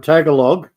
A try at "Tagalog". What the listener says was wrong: Tagalog. They don't pronounce the G at the end. It's a very soft G. Tagalog. The first time I read the word, I said exactly the same thing. Tagalog.